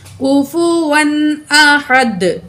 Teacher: احدن، تو وقف کریں گے، دو پیش روک ہو جائیں گی، دال ساکن پڑھی جائے گی، دال پہ قلقلہ ہوگا، جب بھی دال ساکن ہوگی تو اس پہ قلقلہ ہوگا، آواز ڈبل آئے گی